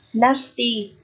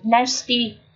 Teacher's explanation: Nasty là âm A dài này. Hoặc là nasty là âm nửa E nửa A này.